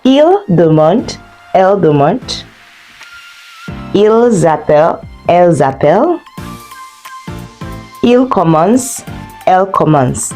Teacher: For all verbs, whether first group, second group, third group, you don't pronounce that ending, ENT.